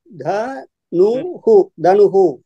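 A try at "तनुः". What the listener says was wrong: அத படிக்கும் போது த நு படிக்காதீங்கோ, த நு ஹு சேர்த்து படிச்சிடணும்.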